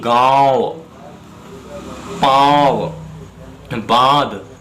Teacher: चंद्र बिंदु के उच्चारण में हवा मुख और नाक दोनों से निकलती है